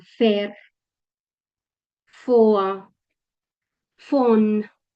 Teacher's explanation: la V, que se lee como una F